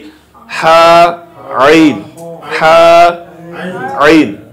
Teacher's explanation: এটা হলো হলকের মাঝখান থেকে উচ্চারিত হা আইন।